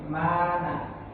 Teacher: Dan orang Arab membaca ini ma ini dengan panjang, dengan aslinya dia panjang, makanya dikatakan mat asli.